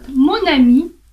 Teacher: носові в нас зникають коли ми робимо зв’язування Наприклад монамі якщо окремо м носовий монамінь носового немає бо не